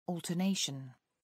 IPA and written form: ˌɔːltəˈneɪʃən (alternation)